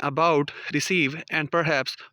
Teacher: in about, receive, and perhaps, final syllable is stressed